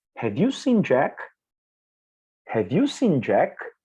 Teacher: the intonation is rising we call it rising intonation it's not steady now it's rising it is going up